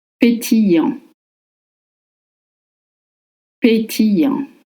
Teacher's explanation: Remember that the double L in French makes the sound ye, as in yes or you. And for the spelling A-N-T, you don't pronounce the T, just the semi-vowel en